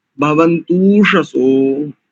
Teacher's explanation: भवन्तु शसो तू शसो, क्योंकि भवन्तु ऊषसः, तो यहाँ पर भवन्तु और ऊषसः इन दोनों को, भवन्तु में ऊ था और ऊषसः में जो ऊ था, इन दोनों को मिलकर के दीर्घ हो गया। अकाह सवर्ण दीर्घ लगा तो भवन्तूषसो ऐसा।